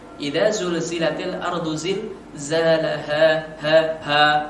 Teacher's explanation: huruf H ini adalah huruf tenggorokan, di mana bacaannya itu waktu di tenggorokan saja dikeluarkannya, bukan dari dada